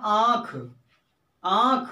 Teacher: उच्चारण में वायव मुंह और नाक दोनों से निकलती है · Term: अनुनासिक